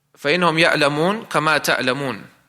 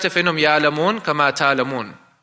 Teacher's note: They wouldn't pronounce that, they wouldn't articulate the hamza. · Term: ibdal